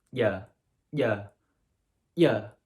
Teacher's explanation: the tongue gets brought up way higher than in english when we have this y sound